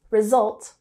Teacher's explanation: has the emphasis on the second syllable